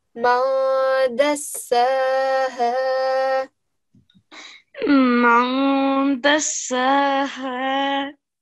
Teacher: It's not a mushaddad, that means it doesn't have a tashdid, and it's not a ba because it's a dal, right? So we need to make sure that we give it a light 2-second nasal sound